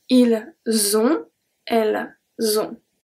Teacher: For both of them, we don't pronounce the T, and then for both of them, we have a link.